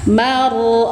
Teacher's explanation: roknya tafkhim, alirkan sedang, sifatnya tawasud. Fu, satu ayunan panjang, matobi zahiri.